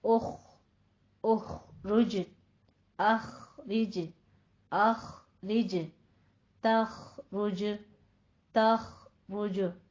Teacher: ایسے خو کو آپ نے ادنا حلق میں لے جانا ہے اور پر کر دینا ہے